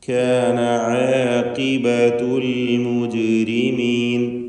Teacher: ജീമിന് സുക്കൂൻ ഖൽഖല സുഗ്റ നൽകി ഹറക്കത്ത് പോലെ ശബ്ദം വ്യക്തമാക്കണം.